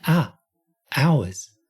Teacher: That's not an H sound at the beginning